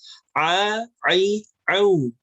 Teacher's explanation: Pertama di ain ya, ai'u. Hati-hati, ain jangan sampai masuk ke dalam pangkal hidung, bukan ai'u, tapi di tengah tenggorokan.